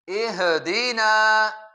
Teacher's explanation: ہا جو ساکن ہے اس پر قلقلہ یعنی جھٹکا دیا جاتا ہے